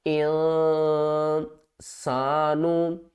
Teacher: حروف اخفا میں سے سین ہے تو یہاں پر نون کے اوپر ہم اخفا کریں گے